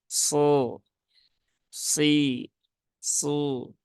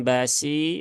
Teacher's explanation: Kemudian basiro, nah ini yang perlu menjadi perhatian mungkin di sini ya, ya di huruf sodnya, huruf sod dia huruf tebal ya, huruf tebal dia punya sifat isti'la ya, berarti pangkal lidahnya itu dinaikkan. Kemudian dia juga punya sifat idbaq ya.